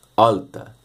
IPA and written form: ɑltɑ (alta)